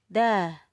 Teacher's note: ujung lidah bertemu dengan pangkal gigi seri atas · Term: huruf dal